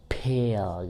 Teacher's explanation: caranya bisa di plosive atau stop, diledakkan gitu, saya seperti kata misalkan pale gitu, seperti ada ledakan bunyi peh itu ya.